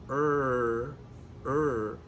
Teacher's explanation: Our tongue does go back, r-r-r but it doesn't touch. and it certainly doesn't roll.